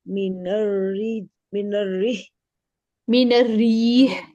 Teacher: री को हमने लंबा करना है